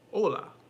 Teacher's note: i keep forgetting that the h is silent in spanish so i keep saying things like hecho instead of acho and